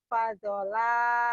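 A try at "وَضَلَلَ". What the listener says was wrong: Wa. Bukan fa tapi wa. Wado.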